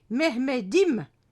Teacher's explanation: C'est ainsi qu'en turc, le D réapparaît si la lettre finale est suivie d'une voyelle qui sonorise à nouveau la consonne. C'est le cas si on veut dire mon Mehmet, c'est Mehmedim avec le suffixe im, mon, qui s'ajoute en fin du mot selon les règles grammaticales de la langue turque.